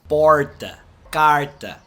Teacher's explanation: A língua vai lá pra trás, aponta pro céu da boca e não encosta. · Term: som do R